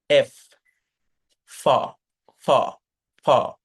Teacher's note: উপরের পাটির দাঁতের সাথে আপনার নিচের ঠোঁটটা কামড়াতে হবে, এরকম ভাবে, এফ, ফ, ফ, ফ, সজোরে বাতাস বের করে দিতে হবে